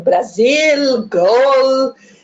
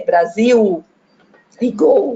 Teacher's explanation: E o L com som de U também